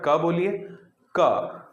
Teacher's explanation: क बोलते समय तो आपकी जीभ का जो एकदम पिछला भाग है वो कंठ से टकरा गया